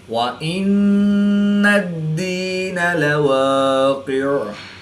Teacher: نون مشدد میں ہمیشہ غنہ ہوتا ہے، تو یہاں پر ہم غنہ آنی کر کے پڑھیں گے۔ دال حروف قلقلہ میں سے ہے، جب حروف قلقلہ مشدد ہوں تو ان میں قلقلہ خوب جمع کے ساتھ کریں گے، اس کو قلقلہ کبریٰ بھی کہتے ہیں۔